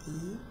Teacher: the tongue is high at the front for example like e are the lips spread is it quite a tense long sound